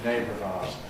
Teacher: syllabic [r̩] can then lose its syllabicity, because there’s a weak vowel following, so ‘compression’ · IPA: [ə ˈneɪbrəv ₒaʊəz]